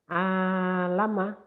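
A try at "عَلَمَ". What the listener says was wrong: Nah, Bapak tinggal perlu kelembutannya aja ya. Kenceng dikit boleh tapi lembut tetap ya.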